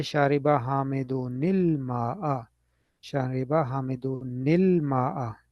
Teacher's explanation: if the kasra is not added, it is difficult to pronounce the letter combination noon and lam. This is called iltikau sakinain, combination of two vowel letters, two vowel-less letters.